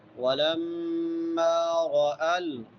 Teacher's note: را موٹی ہوگی، را کے اوپر زبر ہے، جب را کے اوپر زبر آ جائے، پیش آ جائے تو موٹی ہوتی ہے، زیر آ جائے تو باریک ہوتی ہے۔